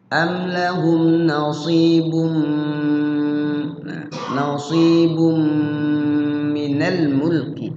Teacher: Yaitu tanwinnya dimasukkan ke mim. Kemudian di mimnya digunnah. Digunnah artinya dilagukan. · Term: Idgham bi gunnah